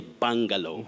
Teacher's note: That letter U takes the mid-central sound just like in the word buffalo.